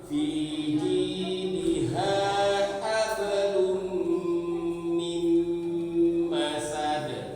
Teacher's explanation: Mim bertasdid, dua pukulan dengung.